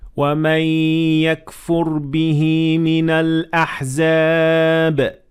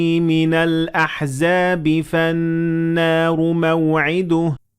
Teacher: note کریں، جب میں الاحزاب پر رکا تو میں نے با کی آواز کو بدلا، اور جب میں نے تلاوت جاری رکھی تو آواز مختلف ہو گئی، یعنی با کی آواز قلقلہ سے بغیر قلقلہ میں بدل گئی جب میں نے رکنے کی بجائے تلاوت جاری رکھی